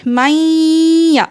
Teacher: 2 second تک غنہ کریں، اس کے بعد پھر یا کا ساؤنڈ آنا چاہیے